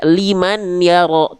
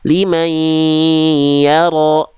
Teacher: bunyi an-nya masuk ke ya, liman yaro, gitu ya.